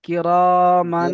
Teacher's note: তানবিন তানবিনকে তানবিনের মিমের পরে উপরে হুরুফে ইকফার 15টি অক্ষরের মধ্যে থেকে কাপ এসেছে, হুম, এই জন্য পূর্বে তানবিনের আওয়াজকে নাকে তুলে তানবিনের আওয়াজকে নাকে তুলে, এ, নাকে তুলে একালি পরিমাণ গুণনা করে পড়তে হবে। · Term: গুন্না